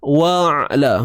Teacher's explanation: huruf ain sempitkan di bahagian tengah kerongkong